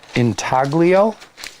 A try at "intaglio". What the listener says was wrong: Actually, the G is silent because I went to Google to see how to pronounce it. Talo, I think.